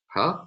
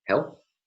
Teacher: the glottal fricative huh like in the beginning of the word help